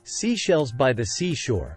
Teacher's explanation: s is voiceless pronounced without the voice by pushing air between your teeth and through open and rounded [Music] lips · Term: hissing s sound